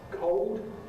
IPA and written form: kɒod (cold)